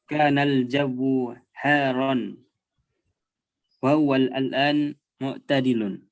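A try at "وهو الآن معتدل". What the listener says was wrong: wa huwal an. Jangan diulang wa huwa al-an. Wa huwal an. Wa huwal an. Wa huwal ana mu'tadilun.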